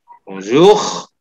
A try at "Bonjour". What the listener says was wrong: R-nya kelihatan ya. Bonjour.